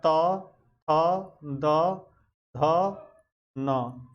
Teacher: और तवर्ग, ये दांत से बोले जाते हैं, याद रखना।